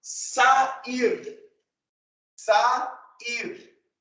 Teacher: o encontro de sons vocálicos estará em sílabas separadas, diferentes. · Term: hiato